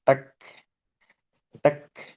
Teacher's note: Huruf kaf ini ee bukan huruf qalqalah, melainkan justru huruf yang mendesis sebetulnya